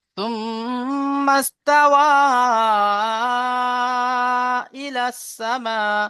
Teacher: মাদ্দার পরে অন্য শব্দে হামজা এসেছে, তাই হরুফে মাদ্দাকে 3 থেকে 4 আলিফ পরিমাণ টান দিয়ে পড়তে হয়। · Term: মাদ্দে মুনফাসিল